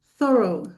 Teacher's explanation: So, it has two syllables, thorough. And that last part, the o u gh has a long o sound